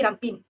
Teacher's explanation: Selain itu, perkataan ramping telah mengalami pengguguran konsonan dalam dialeki Sarawak iaitu konsonan NG telah digantikan dengan konsonan N menjadi rampin